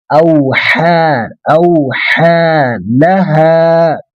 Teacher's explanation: इसको एक मद्दे तिबीई बोलते हैं, 2 अलिफ के बराबर खींचेंगे, एक अलिफ 2 अलिफ के बराबर खींचेंगे।